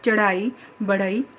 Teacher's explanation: महाप्राण ध्वनियाँ, क्योंकि इनके उच्चारण में मुख से अधिक हवा निकलती है। तो इनका उच्चारण स्थान जो है मुख के भीतर की ऊपरी छत का अगला भाग।